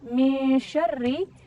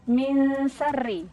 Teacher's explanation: banyak yang tertukar dengan huruf sin yang harusnya adalah min syarri tapi membacanya min sarri